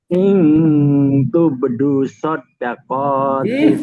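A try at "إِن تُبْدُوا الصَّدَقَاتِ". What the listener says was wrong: Sodako nggak ada dal, nggak ada tasdidnya.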